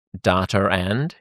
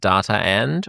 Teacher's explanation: when a word ends in a vowel and the next word begins in a vowel, we put a linking R in. So we would say like data and instead of data and or like China and Japan or something.